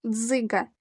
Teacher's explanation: один звук ДЗ у слові дзиґа 2 склади наголошений перший склад перший звук ДЗ твердий тому що стоїть перед голосним и